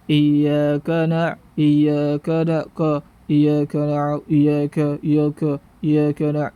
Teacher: Di sini kekeliruan kaf ini bisa menjadi tebal karena tidak menyempurnakan harokat fathah pada huruf kaf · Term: menebalkan huruf kaf